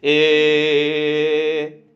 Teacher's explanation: ऐसे स्वरों में उच्चारण में जीभ ऊपर उठकर बीच में रहती। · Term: अर्ध समृद्ध